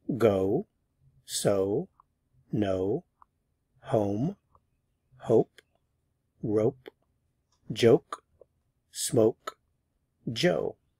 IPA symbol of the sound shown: oʊ